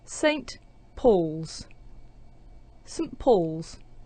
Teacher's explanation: instead of saying saint with a strong pronunciation, we're using the weak form, sunt, and then we have a n sound and a t sound and the p sound at the beginning of Paul's.